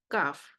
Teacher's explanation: You can see the placement of tongue and the you can say its distance between tongue and the upper part of the mouth. And in kaf, there's no istila, not ittabaq, istifal and infitah. Kaf. That's why it's pronouncing very smoothly.